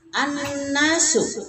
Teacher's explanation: jadi dua huruf itu nun dan mim kalau ditasdidkan dibacanya digunahkan, didengungkan ya, kira-kira dua harokat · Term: gunnah